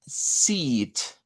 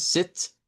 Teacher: No confundirla con el verbo de sentarse. Ese es con una I corta, ese es sit. Este es seat, es una I larga. Seat es un asiento, a veces se traduce como asiento o butaca.